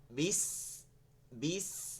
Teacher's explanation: বিস বিস দেখেন এই সিনটা যখন বলতেছে এটা চিকন হয়ে যাচ্ছে, বিস, আরেকটা সির শব্দ আসছে, সির, ওই যে তেলের মধ্যে মাছ দিলে, গরম তেলের মধ্যে মাছ দিলে যেমন সির সির করে শব্দ আসে না, ঠিক ওভাবে শব্দ আসতে হবে।